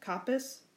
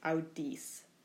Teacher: Listen to the different pronunciation between the third io and the fourth when we have a short vowel versus a long vowel.